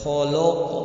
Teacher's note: ان حرفوں کو ادا کرتے ہوئے زبان کی جڑ کے اکثر حصے کو تالو کی طرف اٹھانا پڑتا ہے، جس کی وجہ سے یہ حروف موٹے ہو جاتے ہیں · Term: استعلا